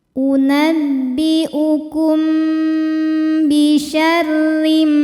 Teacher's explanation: Ikhfa Syafawi sebab ada mim sukun yang menghadapi huruf ba maka bunyi mim sukun didengungkan terlebih dahulu jadi kita tahan dulu bunyi m-nya